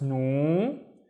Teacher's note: The waw makes it twice as long, so it's nu.